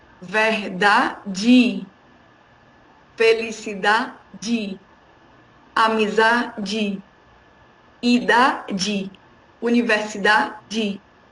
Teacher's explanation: la E tiene sonido de I al final de la palabra.